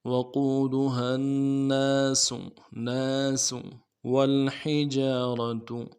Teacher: وقودها الناس والحجارة واو کو لام کے ساتھ ملانا ہے، ہا کو گہرائی سے ادا کرنا ہے، جیم کے بعد الف مدہ ہے، ایک الف دال میں کھینچیں گے، را کو موٹا کریں گے، اور تا کو پیش کو نرمی سے پڑھیں گے۔